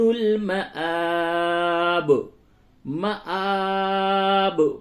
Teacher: مآب با میں قلقلہ ہوگا